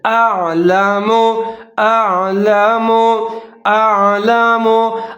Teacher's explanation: जैसे इन्नी अअलमु, हमजा के ऊपर ज़बर है, आइन की साकिन है, हमजा और आइन को मिला के पढ़ेंगे। पहला जो हमजा है उसको बारीक पढ़ेंगे, आइन को मोटा पढ़ेंगे